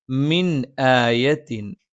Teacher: മ രണ്ട് ചുണ്ടും തുല്യമായി അടച്ചു വെക്കണം